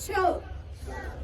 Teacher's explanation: जब हम इसका उच्चारण करते हैं तो हमारी जो जीभ है वो हमारे मूर्धा मीन्स जो हमारे दांतों के ऊपर हार्ड पार्ट है उसको टच करती है